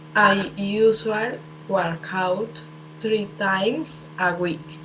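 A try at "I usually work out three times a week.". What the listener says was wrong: Pero no te comas la Y. Esa Y suena como la I, ¿listo? Siempre que ustedes vean una Y siempre va a sonar como la I, ¿listo?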